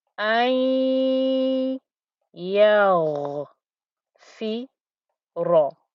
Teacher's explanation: I'm going to semi miss out the noon. I'm going to miss out the n noise. Apply the ghunna to the ya. Hold the ghunna there with the ya and the ghunna together, and then carry on.